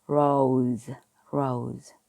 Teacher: 그렇다고 대놓고 즈는 아니고 아주 살짝 즈 소리가 난다고 하면은 가장 비슷하게 될 것 같아요. 그래서 오는 오가 아니라 오우라 그랬죠. 그래서 르, 오우, 즈가 되는 겁니다. · S 양쪽에 O와 E 모음이 있죠. S 양쪽에 모음이 있으면 S가 스 소리가 아니라 지읒 소리에 가깝게 나요. 그렇다고 대놓고 즈는 아니고 아주 살짝 즈 소리가 난다고 하면은 가장 비슷하게 될 것 같아요.